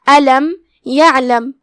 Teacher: ہم عین کو ظاہر کریں گے اور حلق کے درمیان والے حصے سے ادا کریں گے